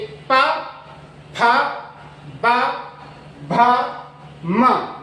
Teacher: देखो दोनों ओठ मिल रहे हैं तो ये ओष्ठय ध्वनिया कहलाती है